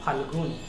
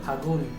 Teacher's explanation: শব্দের মাঝে থেকে ল উঠে যাচ্ছে। ফাল্গুন থেকে ফাল্গুন, মাঝে থেকে ল মানে ব্যঞ্জন উঠে যাওয়ার জন্য এটা মধ্য ব্যঞ্জন। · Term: মধ্য ব্যঞ্জন লোপ